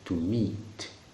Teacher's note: la tendance propre voudrait que le I devienne un I un peu long.